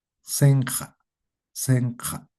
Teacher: Esa J va a afectar a la I. Senja, ¿no? Es más abierta esta I.